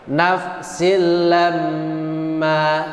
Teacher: Perhatikan pada kata lamma, lam ditasdid, mem ditasdid, tapi cara bacanya beda. Lam ditekan hanya 2 ketukan, mem ditekan lebih lama.